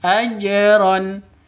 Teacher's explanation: dipantulkan ke huruf jimnya karena ini jin jin sukun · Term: Qolqolah Sugro